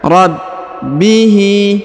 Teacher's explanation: Huruf ba harokat i berharokat tasdid, maka kita tahan dan kita tekan